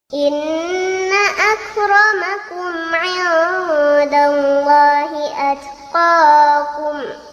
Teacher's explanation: ada nun bertasydid, maka hukum bacaan tersebut dinamakan gunnah dan cara membacanya harus dibaca dengan dengung